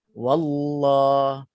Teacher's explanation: Sebelumnya ada waw yang berbaris atas. Jadi lafzul jalalah tu akan jadi taghlizul lam. Lam tu akan tebal.